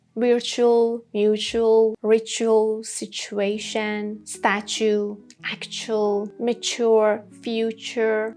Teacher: sometimes in English, we have T plus U sounding ch, and you have to say ch. T is not correct, like in these words.